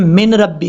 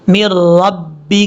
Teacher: میم کو جب را سے ملائیں گے تو بیچ میں نون کو پڑھنے کی ضرورت نہیں ہے